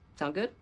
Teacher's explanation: native speakers will often shorten that just to sound good with a rising intonation